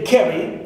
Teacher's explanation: so car is stressed right pronounced with more energy more Force okay and also more prominence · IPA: / ˈk æ rɪ /